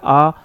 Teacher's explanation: इस विवृत स्वर का जब भी हम उच्चारण करते हैं तो मुंह सबसे ज्यादा खुलता है